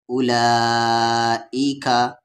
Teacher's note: پہ کھڑا زبر لا، پھر مد ہے، کھڑا زبر کے بعد مد کے سمبل کے بعد یہاں حمزہ ہے تو اس مد کو 3 سے 4 الف کے برابر کھینچیں گے ، اولائکا، اور یہ واو سائلنٹ ہوتا ہے ہمیشہ اولائکا میں،